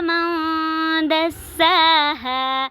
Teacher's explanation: آواز کو تھوڑی دیر کے لیے ناک میں چھپائیں گے، ہاں پہ الف مدہ اور ساتھ میں وقف ہو رہا ہے۔ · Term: اخفا